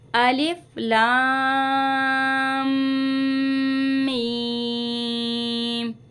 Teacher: लाम को हम पहले खींचेंगे 3 अलिफ की मिकदार, फिर चौथी मिकदार में जो है हम इसको मीम के साथ मिला के पढ़ेंगे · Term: गुन्ना